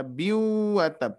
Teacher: tanwin bertemu wawu bertasydid, harus didengungkan ya